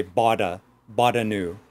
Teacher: when you say in American English, I bought a new, that we pronounce the T like a D.